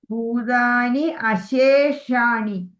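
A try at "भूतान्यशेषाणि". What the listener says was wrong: Yeah, yes, perfect.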